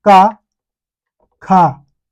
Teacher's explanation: इन शब्दों का उच्चारण करते समय क्या नहीं होता है, वाइब्रेशन, गले में वाइब्रेशन नहीं होती है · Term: अघोष व्यंजन